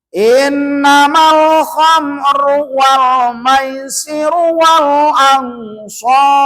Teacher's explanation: Innamal tuh L-nya kan kedengaran. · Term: alif lam qamariah